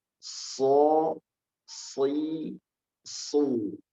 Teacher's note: huruf shad itu memiliki sifat tebal, yaitu sifat isti'la